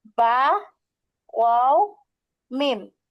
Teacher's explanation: দুই ঠোঁট হইতে উচ্চারণ হয়।